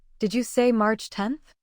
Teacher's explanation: Keep the month and ordinal intact. Rising intonation turns the line into a confirmation.